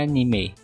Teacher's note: e no Japão é anime com e mais aberto · Já em português de Portugal é anime, a ênfase no I. E no Japão é anime, com o E mais aberto.